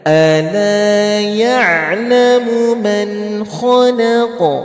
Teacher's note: Ala panjangkan dua harokat saja